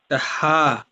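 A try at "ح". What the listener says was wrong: না, এটা হচ্ছে হা। হা। হা। হা না, মানে গলার ভিতর থেকে হা, এটা না, এটা হচ্ছে হা, স্বাভাবিক।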